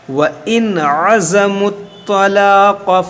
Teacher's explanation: نون ساکن کے بعد عین ہے، یہ عین حرف حلقی ہے تو یہاں پر ہم اظہار کریں گے، یعنی غنہ یہاں پر نہیں کریں گے